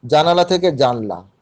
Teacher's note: এটা হচ্ছে স্বরলোপ হচ্ছে, কিন্তু মধ্য স্বরলোপ হচ্ছে